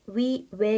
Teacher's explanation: 그래서 지금의 위 외 같이 이중모음 발음하는게 굳어져 버렸어요